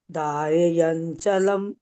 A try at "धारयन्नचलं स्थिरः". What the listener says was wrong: धारयन नचलम स्थिरम, ये दो न है, ये दो है न। धारयन नचलम स्थिर है।